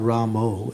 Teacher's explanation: the tendency in the Bengali language is that they change the A to O's. In many of their, both in their kirtans and also in their writings, O becomes, overshadows A.